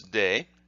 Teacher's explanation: First of all, we will look at this hiragana, and you notice that it looks like the te, but it has been voiced into de